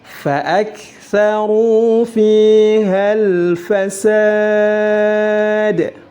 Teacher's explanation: huruf dal yang terakhir harus juga memantul atau dipantulkan. Ulangi.